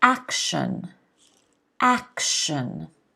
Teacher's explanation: action kind of turns into a sh sound